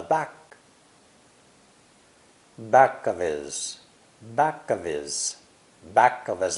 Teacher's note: the personal pronouns and adjectives he him his and her usually lose the h sound in conversation